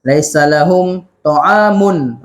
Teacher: Laisa lahum, mim mati jumpa dengan huruf ta. Dibaca dengan jelas.